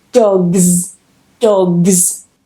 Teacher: when we have a voice sound with the S. If this happens, then we get a Z sound. For example, dog, g, g, g.